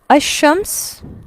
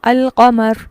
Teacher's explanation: الشمس میں لام نہیں پڑھا جا رہا جبکہ القمر میں لام پڑھا جا رہا ہے